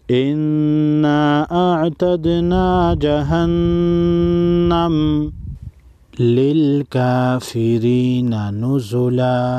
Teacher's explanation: دونوں نون مشدد پر غنہ ہوگا اور دال ساکن کو ہلا کر پڑھیں گے